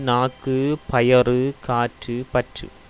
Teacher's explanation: அதே போல் பயறு என்பதில் அந்த ரூனா என்பதில் இட் சக ஊவே ரூ, எனவே அங்கு ஊனா இடம்பெற்றிருக்கிறது. இங்கு உகரம் சில இடங்களில் வருகின்ற பொழுது இதழ் குவியாது உச்சரிக்கப்படும் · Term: குற்றியலுகரம்